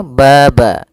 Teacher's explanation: Pada bacaan tabaraka, pada lafal ba di sini ada fathah bertemu alif, maka kita hukumi dengan bacaan yaitu mad tabi'i. Mad tabi'i panjangnya yaitu 2 harakat